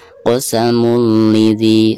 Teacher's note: Maka cara membaca tanwin yang ada di atas lam tersebut itu harus dimasukkan ke huruf lam yang ada di depannya ya, tanpa ada guna. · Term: idgham bila guna